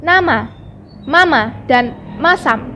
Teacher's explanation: merapatkan kedua belah bibir atas dan bawah lalu udara dari dalam dihembuskan keluar dengan cara melalui rongga hidung ucapannya pada awal dan akhir suku kata itu sama for m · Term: bunyi m